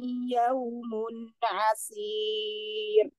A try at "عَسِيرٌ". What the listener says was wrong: Kalau ini tipis ya asir masih tebal. Fadzalika yawmaidzi yawmun asir. Asir. Jangan dinaikin, jangan asir. dinaikin lagi.